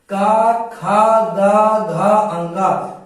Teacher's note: जब आप बोलेंगे का, तो आपको ये लगेगा कि का की आवाज आपकी गले से यानी कि कंठ से निकल रहा है। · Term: का वर्ग